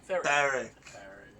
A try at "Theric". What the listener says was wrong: No, you said it with a D. It's a TH. Theric.